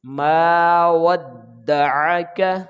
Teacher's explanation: عین کی آواز یہاں پہ حمزہ کی آواز میں تبدیل نہ ہو، یہ خیال رکھنا ہے۔